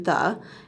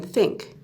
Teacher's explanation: we use two sounds for th, a voiced sound as in the, and a voiceless sound as in think